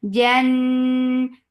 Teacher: Jan for fatha upon jaws attached with noon. Noon will get sifa of gunna. This gunna is akmal, so keep the sound in your nose for a longer time.